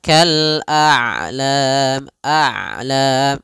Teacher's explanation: Syiddah mengalirnya, syiddah tertahannya suara, rokhawah mengalirnya suara. Ain itu kedua-duanya tidak terlalu dialirkan, tidak terlalu ditahan suaranya. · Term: sifat bainiyah, sifat bainiah